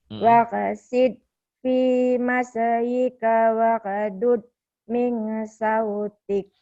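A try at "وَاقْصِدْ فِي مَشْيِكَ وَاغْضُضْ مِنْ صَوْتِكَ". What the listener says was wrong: Min sautik ya. Ada e-nya masih ya, enggak apa-apa lah.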